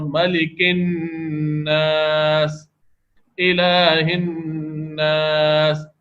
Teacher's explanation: یہ سب غنہ ہوتے وقت ناک میں آواز گھمائی جا رہی ہے